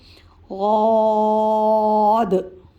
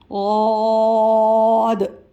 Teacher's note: غاد، یعنی اس کے ادا کرتے وقت منہ کو کھولیں گے، منہ کو تھوڑا سا کھلا رکھیں گے۔ غاد، اور زبان کی کروٹ کنارہ جو اوپر کے داڑھوں سے ٹچ کر کے پڑھیں گے۔ غاد، اس کے برابر میں تو الف ہے تو ایک الف کی مقدار تک کھینچ کے پڑھیں گے.